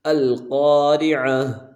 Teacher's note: جب وقف کریں گے تو ہا کی آواز نکالیں گے